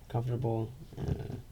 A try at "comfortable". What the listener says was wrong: You say comfortable weird. Yeah, you like separate all the letters. It's like a convertible.